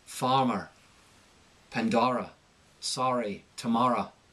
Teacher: And you'll notice occasionally, and not in all cases, OR endings are going to become AR